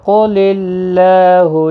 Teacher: قاف حروف مستعلیہ ہے، پر پڑھنا ہے۔ اللہ کا لام زیر کی وجہ سے باریک پڑھا جائے گا، اس کے اوپر کھڑی زبر ہے، ایک الف کی مقدار کے برابر کھینچ کر پڑھیں گے۔